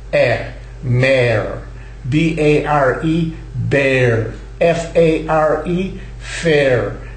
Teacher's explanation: we use an a which is somewhat longer than the short a but not as long